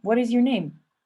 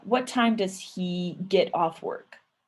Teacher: when we say things like oh what is your name or uh what time does he get off work you'll see that my voice kind of stayed the same